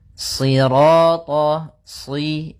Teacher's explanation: Karena shad itu pangkal lidah kita terangkat dan melekat. Karena dia huruf idhbaq.